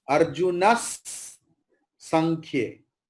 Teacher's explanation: विसर्ग के पास सकार है, इसलिए विसर्ग का प्रोनाउंसिएशन सकार जैसे होगा